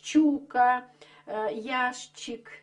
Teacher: поколение старых интеллигентов эту букву щ произносит как шч